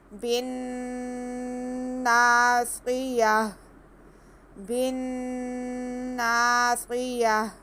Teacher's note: نون مشدد ہے اس لیے اس میں ہم ایک الف کے برابر غنہ کریں گے۔ اور آگے اینڈ میں ہم نے وقف کرنا ہے تو یہاں پہ ہمارے پاس گول تا ہے تو ہم نے اس تا کو ہا میں بدل کر ساکن کر دینا ہے۔